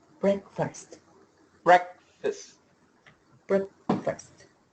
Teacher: Don't worry about the fast. Make it a schwa.